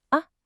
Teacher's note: The second tone rises up like you're asking a question.